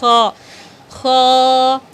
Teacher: حلق کے سب سے اوپر والے حصے سے خا ادا ہوتی ہے، خا خا۔ اس کو کھا نہیں پڑھنا ہے، کھا بالکل غلط ہے، آپ کو خا پڑھنا ہے۔